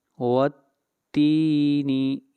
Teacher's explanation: والتین، والتین، یہاں پر تا کو لمبا کریں گے ایک الف کے برابر۔ والتین اس لیے کہ تا کے بعد یا ہے اور یا سے پہلے زیر ہے، یہ یا مدہ ہے، اس مد کو مد اصلی کہتے ہیں، اس کو ایک الف کے برابر کھینچ کر پڑھتے ہیں۔